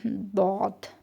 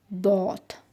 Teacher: Yəni, hava elə bil, dilin həm sol tərəfi, həm sağ tərəfi yanaqlara dəyir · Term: dad hərfinin